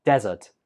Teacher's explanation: if you put the stress on the first syllable it sounds more like desert